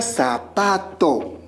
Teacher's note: la mayor fuerza de voz se encuentra en la penúltima sílaba